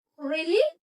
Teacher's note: Jadi nadanya itu naik